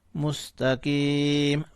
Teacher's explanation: وقف کی صورت میں میم کو ساکن کریں گے تو مستقیم ہو جائے گا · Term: میم ساکن